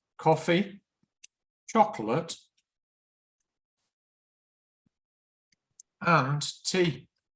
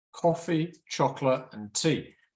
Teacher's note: it rises it rises and then it falls on the final one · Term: rise rise and then fall